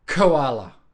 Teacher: the back of the tongue is basically hitting the roof of the mouth